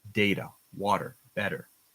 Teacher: the T sound is sometimes softer in North American English if it's in the middle of the word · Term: soft T